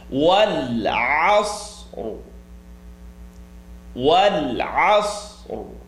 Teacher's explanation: the ra sound is actually going to be very faint. So if you're worried about saying wal asr, you're trying to enunciate a sound that's not meant to be.